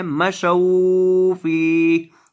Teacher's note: مشو فی، تو آپ نے اس طرح نہیں پڑھنا. یہاں واو کو لمبا نہیں کرنا، یہ واو لین کا ہے، حروف مدہ کا نہیں ہے